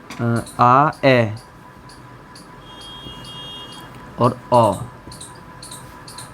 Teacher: इन स्वरों को बोलने में, यानी कि उच्चारण करने में हमारा जो मुख है वो सबसे अधिक खुलता है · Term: विव्रत स्वर